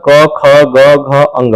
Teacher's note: इसको बोलने पर इसका आवाज जो है कंठ से आता है, डायरेक्ट कंठ से आता है।